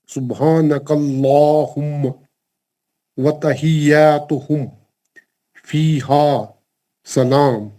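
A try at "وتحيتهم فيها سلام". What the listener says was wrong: تحیتہم یاتہم میں ایک ہی حرکت زبر کو ٹچ کرنا خالی تحیاتہم بولے تو آپ الف فٹ کر دیا بیچ میں دو حرکت کر دی وتحیتہم فیہا سلام ماشاءاللہ ویری گڈ زبر بٹ صاحب آپ نے اچھا پڑھا لیکن تھوڑی پریکٹس کی اور ضرورت ہے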